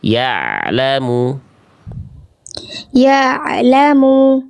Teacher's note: Ya lamu antara bunyi dengan la tidak boleh ada jeda hening karena bukan syiddah sifatnya. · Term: ain sukunnya